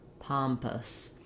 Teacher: paw sound and then adding your n pa palm pompous then our o u s ending is basically a schwa